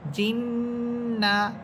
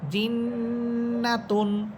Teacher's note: জিন বলার সময় আওয়াজটাকে নাকের ভিতরে নিয়ে গুনগুনিয়ে পড়তেছি এটাই হচ্ছে গুন্না